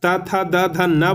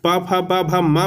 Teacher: पांचवा वर्ण जो होता है उसका उच्चारण स्थान नासिका होता है।